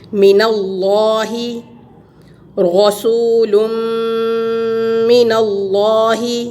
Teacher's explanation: یہاں لفظ اللہ لام جلالہ کے پیچھے زبر ہے، اس کو ہم موٹا کر کے پڑھیں گے